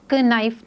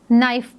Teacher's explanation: नाइफ को हम pronounce करते वक्त क नाइफ नहीं पढ़ेंगे, हम इसको नाइफ पढ़ेंगे। सो के इज़ साइलेंट।